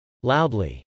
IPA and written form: lˈaʊdli (loudly)